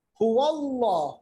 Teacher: ये जो अल्लाह का लाम पुर पढ़ा गया क्योंकि इससे पहले ज़बर है, वाव पे ज़बर है।